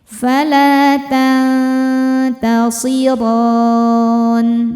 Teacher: Maka ketika berhenti ro-nya ini panjang, boleh 2 atau 4 atau 6 harokat asal konsisten dalam sekali baca. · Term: mad arid li sukun